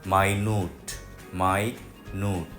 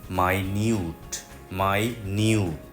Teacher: আমেরিকানরা খুব ছোট জিনিস বোঝানোর জন্য বলে মাই নুড মাই নুড কিন্তু ব্রিটিশরা সেই একই শব্দকে বলে মাই নিউট